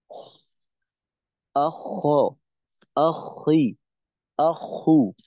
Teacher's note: থাকবে না এটা হবে আখ আখি আহু কারণ এই যে আওয়াজটা এই আওয়াজটা কিন্তু হলকের শেষ থেকে হয় না এই আওয়াজটা হলকের শেষের উপরে অনেকটা উপরে চলে আসে আখ আখি আখু এভাবে তো দুইটা হরফের উচ্চারণটা এই ধরনের হবে